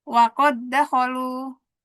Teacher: dal itu bukan huruf yang punya sifat gunah, bukan huruf yang makhrajnya ada di hidung. Jadi dia di sini enggak dibacanya tanpa gunah. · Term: idgham mutamailan